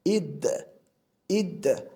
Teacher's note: Bu yerda alif harfi kasra bilan kelganligi uchun i deb o'qiyapmiz, ammo dal harfi sukun bilan kelganligi uchun hech qanday unli bermasdan id holatida o'qiyapmiz